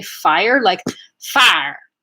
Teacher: she would say fire like far like she would make it into one syllable